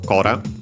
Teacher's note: its accent as I expected is on the first syllable